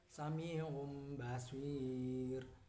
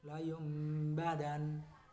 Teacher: Yang dinamakan iklab adalah apabila ada nun mati dan tanwin bertemu dengan huruf ba, cara membacanya adalah mengganti suara nun sukun atau tanwin menjadi mim sukun dan disertai dengan dengung selama 2 harakat